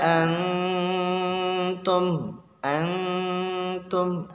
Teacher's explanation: Nun bertemu ta, maka hukumnya ikhfa, disamarkan suaranya, ada suara kayak suara kumbang gitu ya. Itu contoh pada nun sukun bertemu dengan huruf ta.